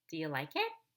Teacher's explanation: You're going to rise at the end of the question, but before you can rise, you have to fall. We're going to fall on the primary phrase stress, or the most important syllable of the most important word, and then we'll rise after that syllable.